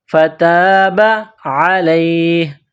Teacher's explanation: کلمات فتاب علیہ، فتاب، الف سے پہلے زبر ہے، حروف مدہ ہے، ایک الف کے برابر کھینچ کر پڑھیں گے۔ فتاب علیہ، عین گلے کے درمیان سے زور لگا کر عین کو نکالیں گے